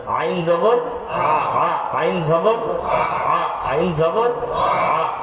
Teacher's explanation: গলার মধ্যে কোনো ধাক্কা আসবে না কণ্ঠনালীর মধ্যখান থেকে। · কণ্ঠনালীর মধ্যখান থেকে উচ্চারণ হবে, হলকের মধ্যখান থেকে। · আইন জবর আ গলার মধ্যে কোন ধাক্কা আসবে না